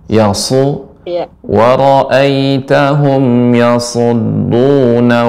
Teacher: Kemudian berikutnya huruf shad. Shad dia ini tebal namun dia mengalir, tajam.